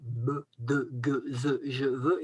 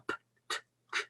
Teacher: Vous avez en rouge les consonnes douces et qui sont les consonnes voisées, c'est-à-dire qui font vibrer les cordes vocales, b, de, ge, ze, je, veux, et les autres qui sont les consonnes dures en noir en dessous, qui ne font pas vibrer les cordes vocales.